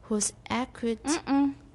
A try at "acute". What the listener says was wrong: It's not at, it's a.